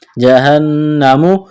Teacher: نون مشدد پر غنہ کریں گے، آواز ناک میں چھپائیں گے، یہاں جب وقف کریں گے میم کو ساکن کریں گے۔